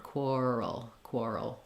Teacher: because we're moving from the r to the L we'll have a little dark L there a little schwa sound